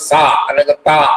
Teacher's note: പല്ലിൽ നിന്ന് നാവ് മുട്ടുന്നത് സ അല്ലെങ്കിൽ ത എന്ന് പറയുന്നുണ്ട് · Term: ദന്തം